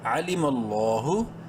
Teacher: عین زبر ع، لام زیر لی، میم لام زبر مل، علیم، لفظ اللہ سے پہلے میم پر زبر ہے، لام کو بولڈ کرتے ہوئے ایک الف برابر لمبا بھی کرنا ہے